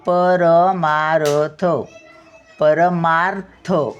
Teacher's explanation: परमार्थ रचा थोडासाच उच्चार येतो र येत नाही